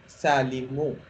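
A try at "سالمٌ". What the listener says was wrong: सालिमुन, अब सालिम के साथ तन्वीन होती है।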